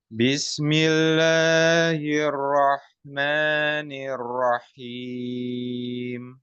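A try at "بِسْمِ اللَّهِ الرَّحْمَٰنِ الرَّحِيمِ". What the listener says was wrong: Nah, perhatikan di sini, Pak. Tadi yang Anda bilang. Jadi masukkan ke sin-nya langsung. Jangan bis. Ingat, kasroh, fathah, dhammahnya itu sempurnakan. A, ya. Fathah, A, dibuka. A. Nah, kemudian kasroh, I. Seperti nyengir ya, kalau bisa dibilang gampangnya.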